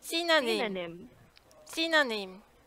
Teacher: go high a little bit on the first syllable